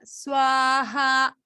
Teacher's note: You see people go swaha like a visarga. This is not a visarga. This is just the intonation is going up.